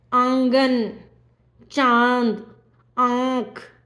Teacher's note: आप अनुभव करेंगे कि नाक और गले दोनों से उच्चारित होता है अनुनासिक